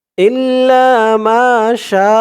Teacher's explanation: শা চার আলিফ টান